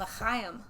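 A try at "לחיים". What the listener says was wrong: No, it's a ch. L'ch. It's more guttural, like. Ch. You need more phlegm in your throat. L'chaim.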